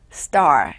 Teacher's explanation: 자, star라고 하는데 네, 영어로 star 많이 들어보셨을 거예요. 같은 T도 S 다음에 오면은 우리의 쌍디귿에 가깝게 좀 된소리가 되거든요.